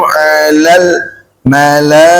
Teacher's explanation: Kalau berhenti jadi ikah, pakai huruf H ujungnya, taknya dirubah jadi H.